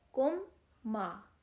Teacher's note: میم ساکن تھا کم کا، میم کے اوپر جزم تھی، اس کے بعد آگے پھر میم آ گیا تو ہم نے اس پر غنّہ کر دیا